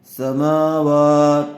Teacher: میم اور واو دونوں کے اوپر کھڑا زبر ہے، اس لیے دونوں کو کھینچنا ہے تھوڑا تھوڑا۔ بچے عموماً اس میں غلطی کرتے ہیں، ایک کو کھینچ دیتے ہیں اور ایک کو نہیں۔